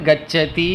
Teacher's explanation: கச்சதி என்பதை 3 மாத்திரையில் உச்சரிக்க வேண்டும் · 2 மாத்திரைக்கு மேல். அதனால தான் கச்சதி என்று தீர்க்கத்தை விட அதிகமாக சொல்ல வேண்டும். அதுதான் 3 என்ற எண் போட்டிருக்கும். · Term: புளுதம்